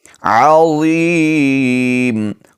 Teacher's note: ضا کو موٹا پڑھیں گے لیکن نرمی کے ساتھ ادا کریں گے، اس پر سیٹی کی آواز بالکل نہیں آئے گی.